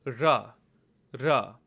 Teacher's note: This is a retroflex semi-vowel, and again, if you put your tongue to the roof of your palate and let sound flow, you can tell that you're making an R sound.